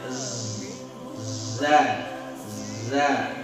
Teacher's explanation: Z, ujung lidah juga dengan gigi depan bawah, ya. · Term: zai